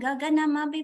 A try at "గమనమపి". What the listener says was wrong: గగనం కాదు మాతాజీ, గమనం.